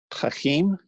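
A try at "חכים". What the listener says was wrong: Hakim. The dagesh in the kaf.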